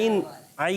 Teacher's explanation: عین ادا ہوتا ہے حلق کے درمیان والے حصے سے